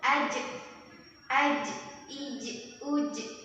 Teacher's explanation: Karakter huruf jim ini dia tidak keluar nafas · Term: jahar